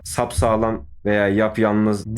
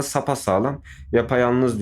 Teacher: Buraya gelen a veya e veya ı veya i herhangi bir ünlü harf geldiği zaman ünlü türemesi oluyor